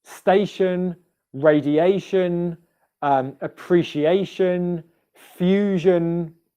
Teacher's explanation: all these words that end in ion, the pronunciation is always schwa plus n sound.